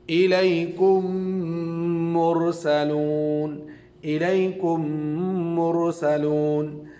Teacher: تیسرا قاعدہ ہے ادغام کا، کہ میم ساکن کے بعد میم آئے تو پہلے میم کو دوسری میم سے ملا کر غنہ کے ساتھ پڑھیں گے